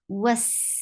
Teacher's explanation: sin will get rakhawa. It has to be with the whistling sound.